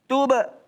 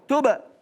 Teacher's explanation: Nah, di sini qalqalah. Mantul ibarat kayak bola.